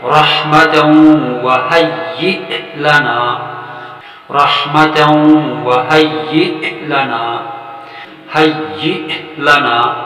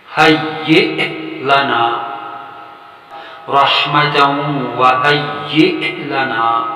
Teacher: حمزہ جس پر جزم آ جائے یعنی سکون کی علامت ہو تو وہاں پہ حمزہ کی آواز میں جھٹکا پیدا ہوگا